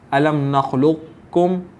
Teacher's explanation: ہم پہلے قاف کو موٹا اور دوسرے کاف کو باریک پڑھیں ، اور چونکہ یہاں پر تشدید ہے، اس تشدید کی بنا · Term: ادغام نامکمل